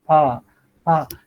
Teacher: Just keep your arm here, pa, pa. Your vocal cord is not vibrating, so that it is voiceless.